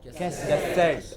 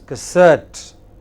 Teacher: The first syllable is hardly heard. It is not ka, it is just ka.